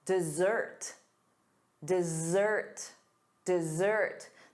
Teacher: The syllable stress is on the second syllable, da-da, dessert